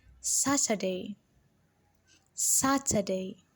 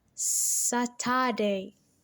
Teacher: saturday is a three-syllable word and the sat is stressed